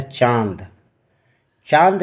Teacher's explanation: चांद जैसे ही बोलते हैं कि नाक का आपका थोड़ा सा नाक फरक जाता है, यानी नाक से उच्चारण हो रहा है। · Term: अनुनासिक